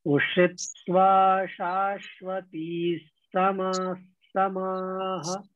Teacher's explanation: विसर्ग के बाद सा आता है तो विसर्ग का उच्चारण आधे सा जैसा हो जाता है